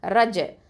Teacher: அடுத்தது ரா ஃபத்தா ஜீம் சுகுன் ரஜ். இந்த ரஜ், இந்த ஜீம் சுகுன் வந்து என்னது, கல்கலா சுகரா கொடுக்கணும். ஓகேவா, கல்கலா சுகரா கொடுக்கணும், கல்கலா எழுத்து, ஏன்னா சுக்குன் இருக்கு இல்லையா ஜீமில், ரஜ்.